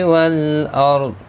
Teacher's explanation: را ساکن سے پہلے زبر ہے، پر پڑھا جائے گا۔ حروف مستعلیہ میں سے ضاد ہے، یہ بھی پر پڑھا جائے گا، وقف کی صورت میں ساکن بھی پڑھا جائے گا۔